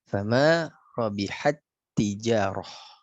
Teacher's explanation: Maka masukkan tak yang pertama ke tak yang kedua. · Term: idgham mislain